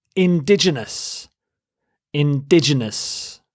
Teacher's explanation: you stress the second syllable